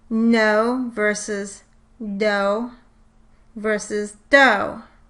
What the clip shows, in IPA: noʊ vs. n͊oʊ vs doʊ